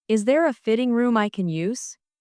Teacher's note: The stress here is on fitting and use.